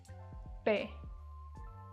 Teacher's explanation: same as English but without the aspiration